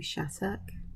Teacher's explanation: Spelt with 2 T's, but it always sounds like the T's are pronounced as D's.